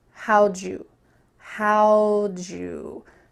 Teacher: There's a lot of linking happening. At the beginning of this sentence, how did you can be reduced to how'd you.